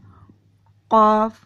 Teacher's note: قاف کے لیے زبان کی جڑ، جو زبان کا آخری کنارہ ہے، اس کو آپ نے تالو میں لگانا ہے اور قاف ادا کرنا ہے.